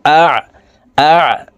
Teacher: আইন হরফকে হলকের মধ্যখান থেকে চাপ দিয়ে উচ্চারণ করব